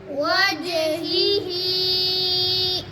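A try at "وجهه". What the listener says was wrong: वज कलकला भी करो जीम पर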